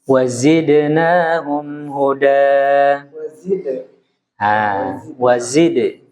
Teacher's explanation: huruf zai ada suara tajamnya, sofirnya ya